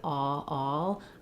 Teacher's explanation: I start with a round shape and I again glide to the L.